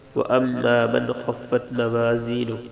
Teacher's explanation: میم پہ غنہ کرنا ہے، من خفت، دوسرے میم پہ غنہ نہیں کرنا، نون پہ غنہ نہیں کرنا کیونکہ آگے خا ہے، جہاں حمزہ ہا عین ہا غین خاجے و غنہ نہیں ہوتا.